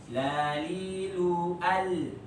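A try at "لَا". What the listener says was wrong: Yang fathahnya jadi perbaiki. Fathah. Nah, terus panjangkan.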